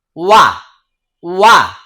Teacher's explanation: দেখেন ওয়াও বলার সময় দুই ঠোঁট গোল হয়ে যাচ্ছে